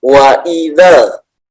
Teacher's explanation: Idza di situ kan ada alifnya ya, tapi ketika di depannya ada alif lam, maka tidak perlu dipanjangkan karena sudah langsung masuk ke alif lam.